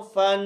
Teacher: हिजे और रवा में फ़ा की सांस महसूस होनी चाहिए सुनने वाले को। आप सुनिएगा, फ़ा दो ज़बर फन, रुकना नहीं है।